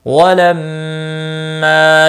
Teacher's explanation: ما الف مدہ ہے، ایک الف کے برابر کھینچ کر پڑھیں گے